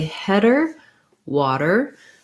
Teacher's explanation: your d is going to make the exact same sound in the middle of words it's also a flap so if i can say header water that may help me